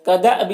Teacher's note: حمزہ ساکنہ ہے تو جھٹکا لگے گا